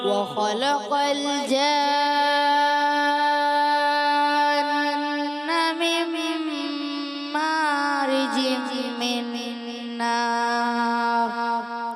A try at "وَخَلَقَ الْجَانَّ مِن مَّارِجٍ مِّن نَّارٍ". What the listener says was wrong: تھوڑا سا ایک جگہ غنہ کمزور ہوا ہے.